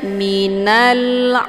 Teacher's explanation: karena sesudah alif lam terdapat huruf qamariah yaitu Ain cara bacanya Alif lamnya dibunyikan secara jelas atau jelas bunyi l-nya Jadi dibacanya Minal jelas bunyi lamnya ya atau bunyi l-nya kemudian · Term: alif lam alqamariyah